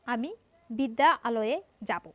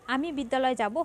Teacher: এখানে বিদ্যা এর আ ধ্বনি এবং আলোয় এর আ ধ্বনি মিলে গেছে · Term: সন্ধি